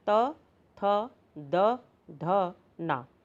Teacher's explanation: इनके उच्चारण में हमारी जिह्वा जो है वे दांतों का स्पर्श करती है, इसलिए इसको दंत व्यंजन कहते हैं।